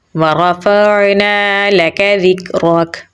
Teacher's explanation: रा को पुर यानी मोटा पढ़ेंगे। फ़ा को आइन के साथ मिलाएंगे। · नून को हम लंबा पढ़ेंगे क्योंकि इसके आगे अलिफ मद्दा है। ज़ाल को हम नरमी से पढ़ेंगे और काफ के साथ मिलाएंगे। काफ को बारीक पढ़ेंगे। रा को पुर यानी मोटा पढ़ेंगे।